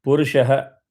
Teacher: visarga will get substituted by half of sa.